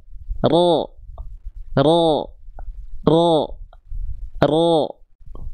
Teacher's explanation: Pangkal lidah kita kita naikkan ke atas. Pangkal lidah kita kita angkat ke atas mengarah ke langit-langit. Nah, mulut kita enggak perlu monyong. Mulut kita cukup tunaikan sempurnanya harakat fathah. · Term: isti'la